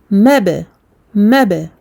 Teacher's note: كالفراش المبثوث مب ميم فتحة با سكون مب. Donc qalqalah sur le ba comme on avait tout à l'heure avec le dal. Donc c'est le même mécanisme, on touche le point de sortie. En l'occurrence ici pour le ba, on referme les lèvres et on les ouvre aussitôt.